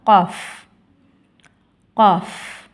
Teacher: காஃப் நாவின் வேர்பகுதி மேல் முரசை தொடும்பொழுது ஒலிக்கப் பெறுகின்றது